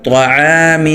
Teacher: طا موٹا ہو عین موٹا نہ ہو ، طعو نہیں بولنا، طعام، وقفاً طعام، عین زبر ع، عین